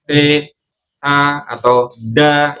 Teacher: Dal itu makhrajnya ujung lidah kita. Ujung lidah bertemu dengan pangkal gigi seri. Pangkal gigi seri itu yang berbatasan dengan gusi. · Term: huruf dal